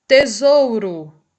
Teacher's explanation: esse Ozinho aqui é pronunciado com o som de U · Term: semivogal